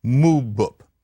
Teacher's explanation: The P only changes to B when there's a vowel before it. And so mu bup.